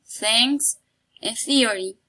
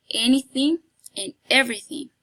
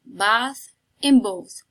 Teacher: the place of articulation of the phoneme is interdental because the song is between the upper and the lower seat · this is fricative because the tongue approaches but does not make contact with the place of articulation. So this is fricative, and this is a voiceless sound because you don't feel vibration in your vocal tract. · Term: interdental fricative, interdental fricative voiceless, interdental fricative voiceless sounds